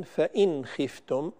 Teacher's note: وقوموا لله قانتين، وقوموا لله قانتين، فإن خفتم، هنا النون الساكنة كما ذكرت قبل قليل يكثر الخطأ فيها عند الفاء عند الخاء وعند الغين، فالبعض يعطيها غنة زائدة وهي هنا مظهرة إظهارا حلقيا